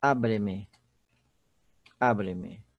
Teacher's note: a sílaba tônica é o A